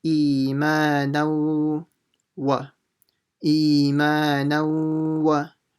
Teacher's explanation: the nun will join, i.e. merge in with the waw, doing ghunnah at the same time